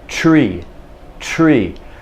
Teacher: i'm in the stop my tongue is there stopping the air on the roof of my mouth but i've already got my lips in the r position · we actually put our lips in the r position before we give you the r before we form the t so the t is formed with the lips in the r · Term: tr combination